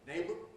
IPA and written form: ˈneɪbr (neighbour)